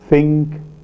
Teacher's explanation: dental place of articulation produced with the tip and blade of the tongue against the teeth